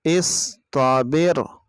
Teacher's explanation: اس صاد کی آواز آئے گی، سین کی طرح نہیں پڑھنا